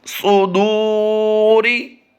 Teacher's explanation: جہاں پر پیش ہو یا واو ہو ہونٹوں کو گول کرتے ہیں، پہلے کو لمبا نہیں کرنا، پیش ہے دوسرے دال واو پیش دو کو لمبا کریں گے کیونکہ یہاں پر واو مدہ کا قاعدہ ہے. اور را کو باریک پڑھیں گے، را کے نیچے زیر ہو تو را باریک پڑھی جاتی ہے